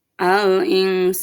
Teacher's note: al-insan dibaca samar dan mendengung